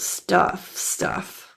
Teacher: the U in stuff is pronounced as that carrot uh uh uh closed jaw sound it's near closed jaw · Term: caret closed jaw sound